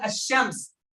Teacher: the lam in the solar words is silent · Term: shamsiyyah